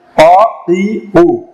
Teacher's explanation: জিহ্বার গোড়া থেকে উচ্চারণ হয়, একেবারে গোড়া থেকে। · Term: কফ